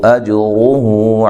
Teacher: جیم کو ہلا کے پڑھنا ہے، قلقلہ ہے. را کو موٹا پڑھنا ہے، مد اصلی ہے.